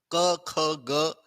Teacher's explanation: क, ख, ग, ये है कंठ्य, गले के अंदर से निकल रहा है